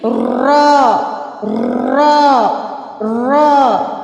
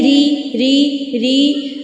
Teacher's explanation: جب ہم را بولیں گے تو اس میں سے وائبریٹ ہوگی، اور را کے اوپر جب زبر اور پیش ہوگی تو را موٹی پڑی جائے گی، را را را ایسے۔ جب زیر ہوگی تو باریک پڑی جائے گی